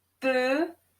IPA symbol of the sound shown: pø